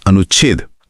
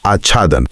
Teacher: नियम कहता है कि जब किसी ह्रस्व स्वर यानी अ, इ, उ या फिर आ के बाद छ वर्ण आता है तो संधि होने पर छ से ठीक पहले आधे च का आगम हो जाता है।